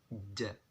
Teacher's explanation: Ja ini ketika dilafatkan, ketika dikeluarkan suaranya, maka tidak ada udara yang keluar dari mulut kita.